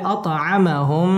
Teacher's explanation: মিম সাকিনের বামে মিম আসছে ইদগামে মিসলাইন গুন্না সহ মিলিয়ে পড়তে হবে